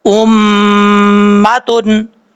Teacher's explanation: اور اسی طریقے سے میم مشدد ہو تب بھی میم کے مخرج میں زبان کو لگانا پڑے گا، اس کو دونوں ہونٹوں کو ملانا پڑے گا